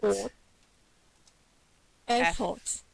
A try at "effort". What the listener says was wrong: Effort. Effort has got the schwa, this sound. Yes, well, sometimes it helps because when your brain sees the letters, it tries to trick you. It thinks, no, that must be fort. I know how to say fort, but it's not.